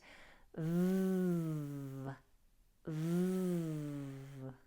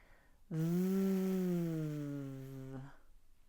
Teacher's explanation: Your voice is on, which means you're creating sound in the larynx that you will feel as vibration if you place your hand gently on your throat. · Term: voiced fricative